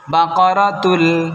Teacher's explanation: ইদগাম বেলা গুন্না, গুন্না ছাড়া মিলেই পড়তে হবে